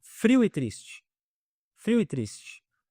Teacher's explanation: O O, ele é uma vogal fraca. E o E, ele é mais forte. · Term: Você junta os dois